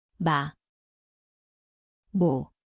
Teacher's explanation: 미음, Znie ako meter. Miesto sú obidve pery, nosová.